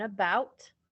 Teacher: the schwa at the beginning of the word like in about or at the very end of the word as in china